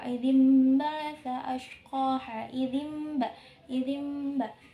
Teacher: Nah, di situ ada hukum bacaan iklab, yaitu di mana nun matinya itu ketika dibaca itu berubah menjadi mim